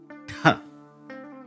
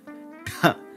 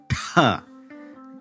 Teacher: The next stop is unvoiced but aspirated. So there is going to be a puff of air, but no voicing.